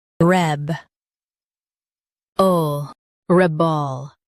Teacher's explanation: Stress the reb and keep ol light.